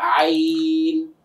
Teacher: সাধারণ জনগণের কাছে বা আপনাদের কাছে সবচেয়ে কঠিন যে হরফটা লাগে, আইন। গলাতে একটু চাপ দিয়ে বের করতে হয়, আইন, হলকের মাঝখান থেকে